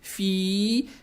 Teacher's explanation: Далее стоит буква фа с касрой. Касру тянем в два счета за счет буквы я без огласовки. Это мад таби'и.